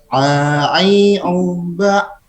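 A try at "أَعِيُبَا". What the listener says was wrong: Masih ke hidung tuh ai-nya. Aiuba. I U ujungnya. Belum itu, belum ke mulut, masih ke hidung. A I U. Nah, itu pun sama ain juga ujungnya seperti itu. Aiu, aiu, aiu sama.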